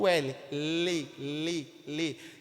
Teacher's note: a pontinha da língua tá batendo lá no céu da boca